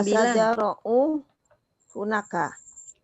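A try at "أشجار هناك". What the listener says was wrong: lupa lagi ya, naik turun naik.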